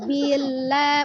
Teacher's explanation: lam itu sifatnya adalah tawasut baini ya tengah-tengah gitu ya tidak terlalu dekatkan tidak terlalu dilepas